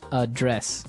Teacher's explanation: the verb address has the the stress on the second syllable